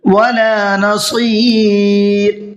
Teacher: صاد کو پر کر کے پڑھنا ہے اور را کو باریک کر کے پڑھنا ہے۔ را کو باریک اس لیے پڑھنا ہے کہ یہاں پر را ساکن سے پہلے یا ساکن ہے، اور جہاں پر بھی را ساکن سے پہلے یا ساکن ہوتی ہے تو وہاں پر را کو ہمیشہ باریک پڑھتے ہیں۔